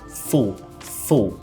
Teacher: a gente vai quase que engolir o l full full ele fica um pouco mais profundo ele fica um · O que seria esse dark L? Seria a pronúncia do L um pouco mais profunda mesmo, quase que se eu estivesse engolindo o L e colocando o L na garganta.